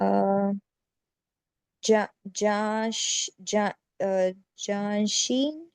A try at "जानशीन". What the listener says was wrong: जानशीन, good.